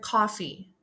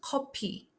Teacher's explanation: In Korean, it becomes kopi. The F sound doesn't exist in native Korean, so it's replaced with P. The word is also broken into two syllables, each ending in a vowel, to match Korean phonotactics.